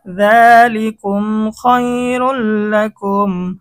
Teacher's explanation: এখানে ঈদগামে বেলা গুন্না হয়েছে, তানবিনের পরে ঈদগামে বেলা গুন্নার হরফ লাম এসেছে, গুন্না ছাড়া মিলিয়ে পড়তে হবে।